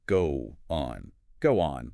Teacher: Your lips form a tight circle for the O in go. To connect that smoothly to the O in on without stopping your breath, your mouth bridges the gap with a W. It becomes go on.